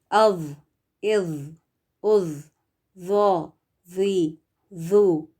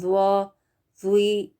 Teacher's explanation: ذا کو ادا کرتے ہوئے یہ دھیان رکھیں کہ اس کو موٹا پڑھنا ہے، ہیوی لیٹر میں سے ہے. زبان کا جو پچھلا حصہ ہے وہ اٹھا ہوا ہوگا، اور جو زبان کی نوک ہے وہ باہر تھوڑی سی نظر آئے گی